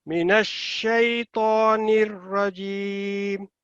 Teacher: را لمبا نہیں ہونا، ٹھیک ہے، را کے اوپر صرف 1 سیکنڈ ہے